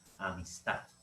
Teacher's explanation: las palabras agudas son aquellas que tienen esta intensidad en la última sílaba